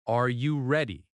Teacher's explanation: Rising tone shows a question. · Your voice rises at the end.